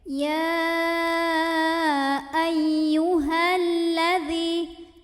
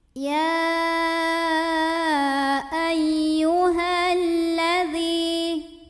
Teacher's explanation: Mad tabi'inya ini gugur, hanya dibaca pendek. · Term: takhallus bil hadfi